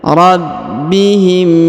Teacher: huruf ba ditahan dan ditekan karena berharakat tasdid